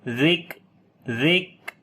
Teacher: کاف کے اوپر صفت شدت اور ہمس دونوں آ جائیں گی